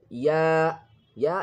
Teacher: Ya is pronounced from the middle of the tongue as a mud letter. It comes from the empty mouth space.